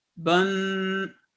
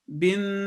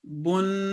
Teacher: तो आपने देखा कि ये जब 1 से 2 हो गए, तनवीन का असूल अप्लाई हुआ तो नून साकिन की आवाज़ 2 सेकंड के लिए पैदा हुई